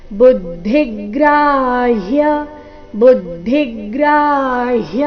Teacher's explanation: ಬುದ್ಧಿ ಬು ಮೇಲೆ ಆಘಾತ ಧಿ ಮೇಲೆ ಕೂಡ ಆಘಾತ ಬರಬೇಕು ಕಾರಣ ಮುಂದೆ ಗ್ರ ಸಂಯುಕ್ತಕ್ಷರ ಗ್ರ ಆದ ನಂತರ ಹ ಅಧಿಕ ಯ ಸೇರಿ ಸಂಯುಕ್ತಕ್ಷರ ಇದೆ ಬುದ್ಧಿಗ್ರಾಹ್ಯ ಬುದ್ಧಿಗ್ರಾಹ್ಯ